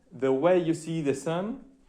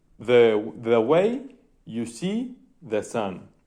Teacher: En este caso es un paquetito de 2 que es unstressed, stressed. Ese paquetito se va repitiendo muchas veces, ¿no? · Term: iambic trimeter